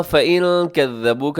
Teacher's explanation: نون کے بعد کاف ہے تو اخفا کیجیے گا. كَذَّبُوكَ کو کذبو نہیں پڑھنا اپنے، ذال ہے نرمی سے پڑھا جاتا ہے.